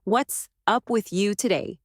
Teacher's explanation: Do not stress with or to. They are soft connectors. The rhythm becomes strong, weak-strong, weak-strong.